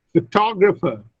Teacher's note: But when I add ER to photograph, look, the stress shifts from the first to the second syllable, photographer, and so many vowels also change.